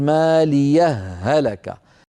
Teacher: الوصل مع إدغام الهاء في الهاء